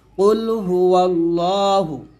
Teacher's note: আল্লাহ হবে লাম খারা জবর ল মোটা হবে কুল হু আল্লাহ হা পেশ হু টান দেওয়া যাবে না আমরা অনেকে টান দেই টান দিবেন না